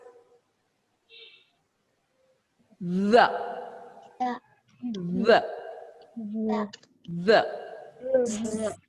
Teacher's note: It is a voiced th sound.